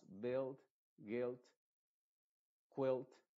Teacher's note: combinación u i se pronuncia como la i modificada es decir la u es silenciosa es muda y la i se está pronunciando con su sonido modificado